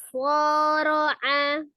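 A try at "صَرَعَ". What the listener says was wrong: Belum, pangkal lidahnya belum naik nih. Soro'a. Ya, kalau khusus di huruf-huruf yang tebal, ketika kita mau baca tebal itu bukan dengan memonyongkan bibir ya, tapi dengan mengangkat pangkal lidah, mulutnya dibuka.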